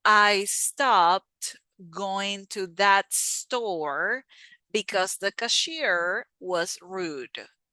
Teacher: we blend the T, the T sound with the S.